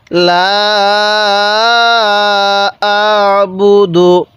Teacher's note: তাহলে লা, হামজা লাগবে এই আইনের সাথে আ। আইনটা উচ্চারণের সময় গলার মধ্যে একটু চাপ দিয়ে পড়লে আইনটা সহি উচ্চারণ হবে। তাহলে লা আ বু, বা পেশ বু, দাল পেশ দু।